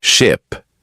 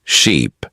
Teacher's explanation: The difference is very small. Ship has a short sound I. Sheep has a long sound e.